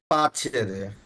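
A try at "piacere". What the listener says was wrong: না, এটার উচ্চারণ পিয়াচ্চেরেই হবে। ফর্মুলাটা অনলি অ্যাকসেপ্টেবল চি, জি আর এস এর জন্য। বাকিগুলা যেমন এখানে যদি ভিয়া থাকে, ওটা আমরা ভিআই বলবো। যদি পিয়া থাকে, আমরা পিয়া বলবো।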